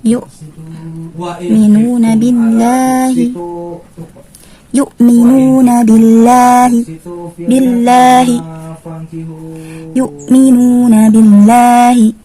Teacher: Lafzul jalalah ketika terletak setelah huruf yang berharokat kasrah, maka dibaca tipis. Dibaca tipis.